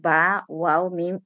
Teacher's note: দুই ঠোঁট হইতে এই মাখরাজ বা, ওয়াও, মিম উচ্চারিত হয়।